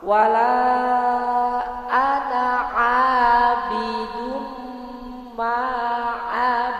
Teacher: Suara tanwin dimasukkan ke mim dengan mendengung, ya Bu. Kalau orang Jawa bilang bernengeng, mendengung, dimasukkan sengau, Bu, sengau.